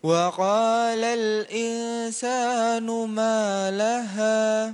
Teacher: Insa tipiskan i ke arah sin langsung ikhfa'nya.